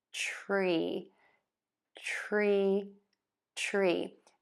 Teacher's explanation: square, tense lips with the tongue either pointed down or flipped back for that R, and then smile for the long E.